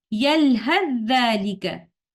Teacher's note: tha will merge into letter dhal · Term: idgham mutajanisan